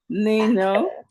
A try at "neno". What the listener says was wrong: Neno, not ni.